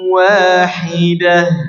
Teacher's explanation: Waqafnya harus menjelaskan huruf h, ya, dengan menjelaskan huruf h ketika waqaf.